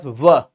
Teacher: दंत और ओष्ठ दोनों ही इसके उच्चारण स्थान है, सम्मिलित रूप में ये उच्चारित होता है, तो वर्ग इसका कहलाता है दंतोष्ठ।